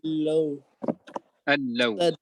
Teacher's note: So there's no extra pull, nothing. You just read the hamza to the lam directly, al-law, and there's no extra pull. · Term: without gunna